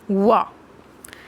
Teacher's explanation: दांत और जीभ और ओठों के कुछ योग से बोला जाने वाला जो वर्ड है वो दंत्योष्ठ कहलाता है